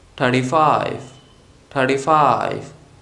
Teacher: in this case we stress on the second number that is five